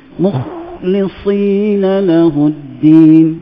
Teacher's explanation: Macam kita baca mukhlisi, kha tu kita tinggi.